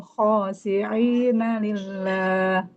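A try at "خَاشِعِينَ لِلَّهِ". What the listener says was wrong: Khosyi'ina. Huruf shinnya Ibu.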